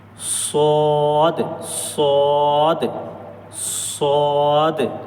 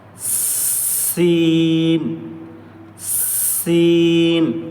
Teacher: स्वाद की आवाज मोटी होगी और सीन की आवाज थोड़ी पतली होगी